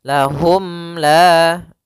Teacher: Maka untuk panjang izhar untuk cara membacanya, yaitu suara mimnya tidak boleh ditahan, tidak boleh lahum la, tapi akan tetapi dia harus jelas dan langsung saja. Lahum la sambil menyempurnakan daripada huruf mimnya. Bibir kita dirapatkan. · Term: izhar syafawi